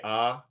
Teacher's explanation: And vowels all just use your tongue. So, like when your doctor says say ah, it's because that's the lowest position your tongue is when you have your mouth open.